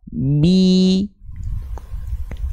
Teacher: Sempurnanya harokat kasroh itu dilafalkan dengan cara wadhun khifadin bin khifadin lil famiyatimu, dengan cara merendahkan rahang bawah kita, itu yang pertama. Jadi dari segi mulut tuh dia bukan nyengir bi, tapi dia direndahkan rahangnya, mulutnya bagian bawah tuh jadi ke bawah.